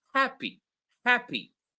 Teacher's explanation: It's happy, right? You will notice that the first syllable, ha, is louder, while the syllable p is less loud than ha